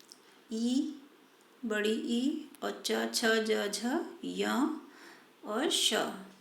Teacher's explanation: तालव्य, अर्थात हमारी जीभ जो है वो तालु से लगती है इनके उच्चारण में।